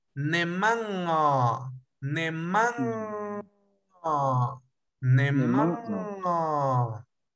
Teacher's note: Este es un sonido nasal velar que se produce entre vocales de diferentes sílabas.